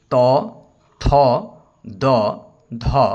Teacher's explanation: উচ্চারণে জীভের অগ্রভাগ উপর পাটির দাঁত স্পর্শ করে। তাই এগুলিকে বলা হয় দন্ত ব্যঞ্জন।